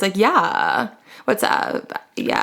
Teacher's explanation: It's that like sandpaper against the vocal cord sound at the end of words. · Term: vocal fry